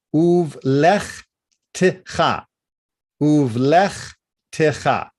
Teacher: Hear how that t is coming up with the tav, and how uvlech, there is no new vowel sound with the chaf.